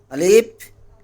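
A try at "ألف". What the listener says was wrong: না আলিফ টান দেওয়া যাবে না। আলিফ আলিফ।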